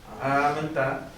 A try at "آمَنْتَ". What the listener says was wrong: थोड़ा सा हल्ली लंबा हो गया, आमनता बस